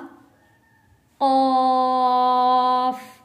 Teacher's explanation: ऑफ मोटा पढ़े जाने वाला लफ्ज है, आवाज को भारी करके पढ़ने वाला लफ्ज है, और जो हमारे गले में गोश्त का एक छोटा लोथड़ा लटक रहा होता है जिसको हम कव्वा कहते हैं उर्दू में, वहां से लफ्ज अदा होगा कौफ। नुक्ते वाले कौफ को हमेशा मोटा पढ़ेंगे।